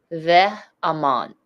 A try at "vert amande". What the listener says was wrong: Yes. You got it now.